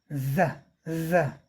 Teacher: अगले दांत जिन मसूड़ों में से निकले हैं उसका पिछला भाग टच करता है जीभ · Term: संघोष वर्थ संघर्षी ध्वनि